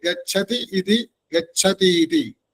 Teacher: ഗച്ഛതിയുടെ ഇയും ഇതിയുടെ ഇയും ചേർന്ന് ഗച്ഛതീതി